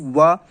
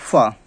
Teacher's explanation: तो दंतोष्ठ से आपको पता चल रहा होगा कि दंत प्लस ओष्ठ, ठीक है, दंत प्लस ओष्ठ, इन दोनों से मिलकर इसका निर्माण होता है, इन वर्णों का। तो जैसे एक वा का उच्चारण होता है दोनों को, वा, दंत प्लस ओष्ठ वा, और एक होता है फा।